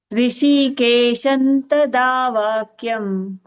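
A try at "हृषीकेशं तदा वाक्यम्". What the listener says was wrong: It's not Rishi. Hrishi. Ha sound should be heard. Hrishikeshantadavakyam.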